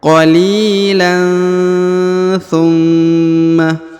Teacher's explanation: jadi dibaca dengung dan disamarkan